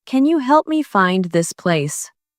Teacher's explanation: Stressed words are help, find, and place.